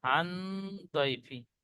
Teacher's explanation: নুন সাকিনের পরে হরফে ইকফার 15টি অক্ষরের মধ্যে দত এসেছে, তাই নুন সাকিনের আওয়াজকে নাকে তুলে এক আলিফ পরিমাণ গুণনা করে পড়তে হবে, একে ইকফা বলে।